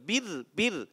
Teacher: बिर नहीं करेंगे, बिर बिर, रा बारीक रखना है।